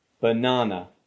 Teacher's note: the first syllable and the last syllable use the schwa sound